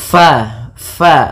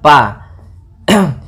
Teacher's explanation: Usahakan di dalam melafalkan huruf fa ini harus ada aliran nafas, karena fa memiliki sifat yang namanya sifat hamas.